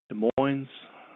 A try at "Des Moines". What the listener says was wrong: You almost said it right. you forgot the S in Des. Des Moines.